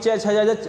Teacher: च छ ज झ बोलने पे जो हमारी जीवा है वो तालु को छूती है, इसलिए हम इसे तालु कहते हैं, तालु वर्ग।